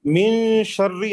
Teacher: نون کی آواز کو ناک میں ہاں ناک میں چھپا کے اور پڑھیں گے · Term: اخفا